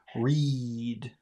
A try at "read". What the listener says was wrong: read. Raise your tongue up more. Read, read, read. And you smile and you push the air out. Read.